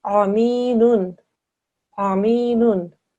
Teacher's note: Ain comes from the middle of your throat.